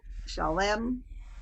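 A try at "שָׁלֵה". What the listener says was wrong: No, chalet. Yes, you're adding an M at the end. It's just chalet.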